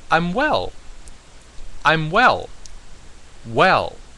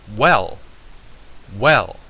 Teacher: it is actually a um thumping tone so to speak it goes down the pitch goes down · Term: fourth tone